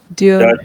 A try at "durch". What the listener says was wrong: It is not Diorsh, it is Dursh. This is This is U sound. U.